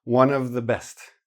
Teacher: Or, if you want to use the V, you keep the wa, nuv, make it like blend into the next word. The N goes into the O, in an ellipsis it's called,